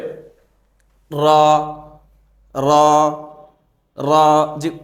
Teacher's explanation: জিহ্বার আগার পিঠ তার বরাবর উপরের তালুর সঙ্গে লাগিয়ে র জিহ্বার আগার পেট তার বরাবর উপরের তালুর সঙ্গে লাগিয়ে উচ্চারিত